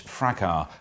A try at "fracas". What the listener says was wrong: I think you'll find it's pronounced fracas. No, it really is pronounced. There's an S, it's fracas. It's fracas. It's fracas, fracas.